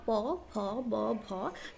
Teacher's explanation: जब ओय व्यंजन ध्वनि बोलते हैं प फ ब भ तब हमारा अपर लिप्स लोअर लिप्स एक दूसरे को टच करते हैं तो ओट को ओट छूता है तो इसलिए ये हो जाता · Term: स्पर्श व्यंजन ध्वनि